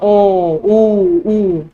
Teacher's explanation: तो होठ जो है दोनों आपके गोल हो जाएंगे, तो व्रतमुखी बन जाएगा आपका।